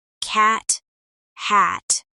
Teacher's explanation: Instead of letting out a burst of air, your tongue just holds the position and stops the sound. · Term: held T